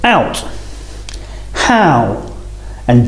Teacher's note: is ow this is a combination of a and or ooh now our mouth is closing and the shape of the lips is changing at the same time rounding a little as we say the sound ow starting on the A and